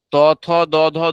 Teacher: ত থ দ ধ দন্তন্য উচ্চারণের সময় বাধা পাচ্ছে জিহ্বা বা শ্বাসবায়ু কোথায়? দাঁতে, সেই জন্য দন্ত বর্ণ।